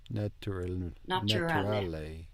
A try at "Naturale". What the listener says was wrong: Good, but the ch sound is from English. No, actually we have a T here. Naturale. Naturale.